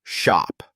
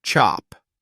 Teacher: the cha sound is quicker and starts with a small sharp stop as your tongue touches the roof of your mouth before releasing the air · you gently push air through your slightly rounded lips there's no sharp stop just a smooth flowing sound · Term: she sound